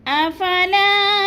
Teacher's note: لا کو تھوڑا سا ہم نے لمبا کرنا ہے، الف مدہ ہے